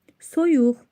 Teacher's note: Soyuq sözündəki saitlər o u qalındır dodaqlanandır.